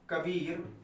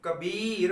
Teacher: जैसे अगर मैं बोलता हूं कबीर, तो कबीर बोलने में जो वर्ण है बा, उसमें अधिक बल आपको लगाना पड़ रहा है। जैसे कबीर बोल रहे हैं तो आपको बा में अधिक बल देना पड़ रहा है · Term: बलाघात